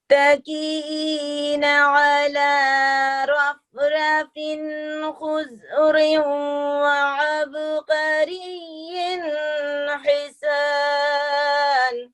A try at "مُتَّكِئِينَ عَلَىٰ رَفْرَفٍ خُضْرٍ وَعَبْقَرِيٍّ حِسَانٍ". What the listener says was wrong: لیکن تھوڑا سا لمبا ہوا ہے، لیکن ٹھیک ہے، پھر بھی ٹھیک آپ نے پڑھ لیا.